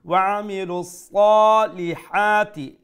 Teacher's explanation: the sa is a full mouth letter, you pronounce it with a fuller sound , and then one alif long due to the standing fatha.